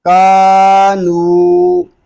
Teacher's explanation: next ذال کھڑا زبر زا، لام زیر لی، ذالی، کاف زبر کا، ذالکا کھڑا زبر، کاف الف زبر کا، نون واو پیش نو، کانو، اس کو کانو اس طرح نہیں پڑھیں گے، یعنی نون کی آواز ناک میں نہ جائے